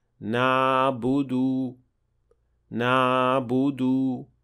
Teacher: leaving too big an opening between the wall of your throat and the epiglottis, producing what we call in Tajweed a floating عين